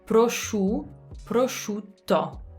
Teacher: remember the lips coming out on the U.